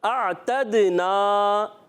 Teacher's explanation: اعتدنا، حمزہ کو عین سے ملائیں گے، حمزہ اور عین کلیئر آواز آئے گی، اور تا کو دال سے ملائیں گے، دال کو ہلائیں گے، جی ہاں دال کو ہلائیں گے کیونکہ کلکلہ ہو رہا ہے۔ اعتدنا، ہل گیا نا، دیکھیں ہلنا یعنی کلکلہ کے معنی جنبش ہونا، حرکت ہونا۔